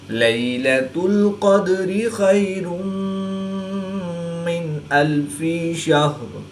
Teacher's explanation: نون ساکن کے بعد حروف حلقی میں سے حمزہ ہے، تو یہاں پر اظہار ہوگا یعنی غنہ نہیں کریں گے بلکہ نون ساکن کو ظاہر کر کے پڑھیں گے · یا ساکن سے پہلے زبر ہے، تو یا لین اس کو لمبا نہیں کریں گے